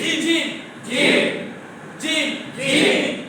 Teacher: কোথায় থেকে উচ্চারিত হয় জিহ্বার মাঝখান থেকে